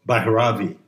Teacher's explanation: puts the accent on the first syllable